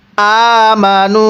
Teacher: মিম জবর মা, নুন ওয়াও পেশ নু, আমানু। এই নুনের মধ্যে 3 আলিফ টান দিব। মদের হরফের উপর চিকন চিহ্ন এরপরে লম্বা হামজা থাকলে সেখানে 3 আলিফ টেনে পড়তে হয়।